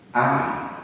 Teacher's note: Another feature you've noticed is the omission of initial H. Am for Harry.